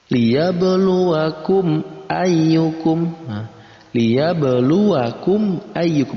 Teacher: antara mim mati dan hamzah dibaca jelas keduanya, tidak digabungkan ataupun tidak didengungkan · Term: idhar syafawi